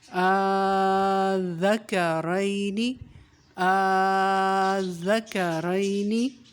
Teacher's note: اس میں دھیان یہ رکھنا ہے ذال کو اور کاف کو نرمی کے ساتھ پڑھنا ہے، را کی آواز موٹی ہوگی، نون کو کھینچنا نہیں ہے